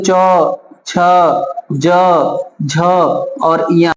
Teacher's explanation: च वर्ग का उच्चारण तालु से होता है